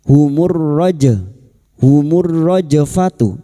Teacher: lam takrif yang bertemu ro idgam syamsiah masuk pada huruf ro.